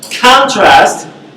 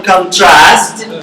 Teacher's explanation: when you have the stress in the first syllable, it's a noun. And when you have the last syllable, contrast, you mean a verb. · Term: stress change